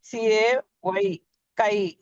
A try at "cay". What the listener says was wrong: కే. ఎందుకు కై వచ్చా?